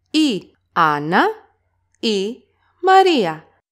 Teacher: you can also see that the word Anna is stressed on the first syllable.